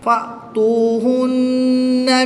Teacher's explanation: نون مشدد میں ہمیشہ غنہ ہوتا ہے، یہاں پر غنہ کر کے پڑھیں گے اور وقف کی حالت میں یہاں پر مد عارض ہوگی، 2 سے 3 الف تک کھینچ کر پڑھیں گے۔